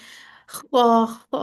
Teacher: इसमें आपकी आवाज थोड़ी आपको फील होगी, खा खा जैसे गला साफ करते हुए होती है